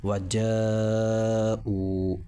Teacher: حرف مدہ کے بعد حمزہ اسی کلمے میں آ رہا ہے، لہٰذا یہ یہاں پر مد ہوگا اور 4 الف کے برابر کھینچ کر پڑھا جائے گا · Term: مد متصل